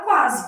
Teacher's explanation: que deve ser minha resposta né O u é pronunciado qua o s tem som de z